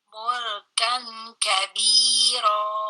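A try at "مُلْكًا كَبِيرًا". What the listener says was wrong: Itu ada ikhfa Bunda. Mulkan Iya, huruf K, huruf nunnya jangan dihilangkan. Jadi jangan menjadi huruf ang. Mulkan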